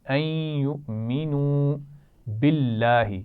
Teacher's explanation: این یؤمنو، این نون پر کیا ہو رہا ہے؟ غنہ ہو رہا ہے، کیونکہ اس کے بعد یا ہے تو ملائیں گے بھی یا کے ساتھ اور غنہ بھی کریں گے